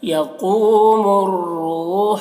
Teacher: را کو یہاں پر موٹا پڑھیں گے اور ہا کو حلق سے ادا کریں گے. یقوم الروح مادے تو اسے زیادہ کھینچیں گے.